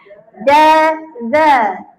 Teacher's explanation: Lembut keluarnya tak ada bunyi macam ni. Za bukan itu zai lidah keluar sikit ya.